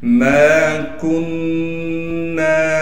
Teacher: ما کننا، میم کو ایک الف کی مقدار کھینچیں گے، اسی طریقے سے میں نے یہاں بتلایا، کاف کو نون سے ملانا ہے غننے کے ساتھ